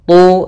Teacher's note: tebalkan huruf ta karena dia huruf isti'la